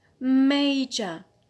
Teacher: So here the stress is on the penult. Penult. Second from the end. So we have applied the rule 1C because we have a schwa at the end.